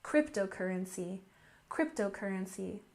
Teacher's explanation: And next we have cryptocurrency, with a stress on the first syllable